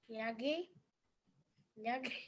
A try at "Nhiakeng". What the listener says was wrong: Close. It'll be Nhiakeng. You got it pretty close though. You got it pretty close. It's just that the ending or closed syllable, it's a little bit different, but you're pretty close. It'll be Nhiakeng. Okay, Nhiakeng.